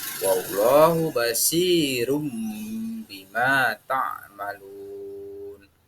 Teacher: mengubah suara N menjadi M atau iklab